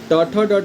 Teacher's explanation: ट ठ ड ढ अगर है तो इसका उच्चारण मूर्धन्य से होता है